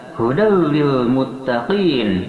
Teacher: Kemudian hudal lil muttaqin, hudan ada tanwin patah bertemu dengan lam, dia diidghamkan tanpa disertai dengan dengungan, sehingga membacanya hudal lil muttaqin, memasukkan tanwin patah kepada lam tanpa disertai dengan dengungan, hudal lil muttaqin, dikarenakan ada tanwin patah bertemu dengan huruf idgham bila gunnah yang 2 hurufnya, yaitu lam dan ra.